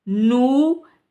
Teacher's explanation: इसको एक अलिफ के बराबर इसलिए खींचा है क्योंकि ये वाव साकिन है और उससे पहले पेश है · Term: वाव मद्दा